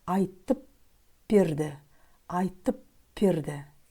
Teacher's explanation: Если буква «б» следует после глухой согласной, то буква «б» произносится как «п».